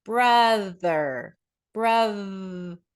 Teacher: those are voice th sounds